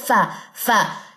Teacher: सनाया उलिया का किनारा जब निचले होठ के तरी वाले हिस्से से लगे